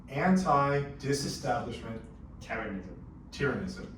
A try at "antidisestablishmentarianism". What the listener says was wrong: Yes, not tyranny, but it's a word. No, anti-disestablishmentarianism. Mentarianism. Anti-disestablishmentarianism.